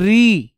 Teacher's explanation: दांत के पीछे वाले पीछे वाले भाग पर हमारी जीभ लगती है